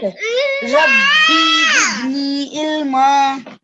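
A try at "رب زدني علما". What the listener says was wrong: Rabbi zidni ilma. Make sure you don't elongate that B, okay? It's just a simple kasra, so make sure you don't elongate that.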